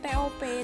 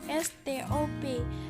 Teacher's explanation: Contoh, kata bahasa Inggris top diucapkan TOP dengan T apicodental, tetapi setelah mendapatkan S laminopalatal pada stop, kata tersebut diucapkan STOP dengan T juga laminopalatal